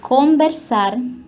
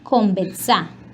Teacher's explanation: la vibrante múltiple alveolar sonora antes de S pasa a oclusiva alveolar sonora. Un ejemplo de ello es conversar, que pasa a conversar.